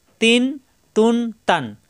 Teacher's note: প্রত্যেকবার জিহ্বার আগা উপরের দুই দাঁতের গোড়ায় লাগবে।